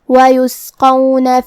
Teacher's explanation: قاف کی ادائیگی زبان کی جڑ اور تالوں کے نرم حصے سے ہے. قاف حروف التفخیم میں سے بھی ہے تو ہم حرف القاف کو بھاری آواز میں ادا کریں گے.